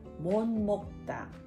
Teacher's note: ニウンやミウンの影響を受けてモンに変化します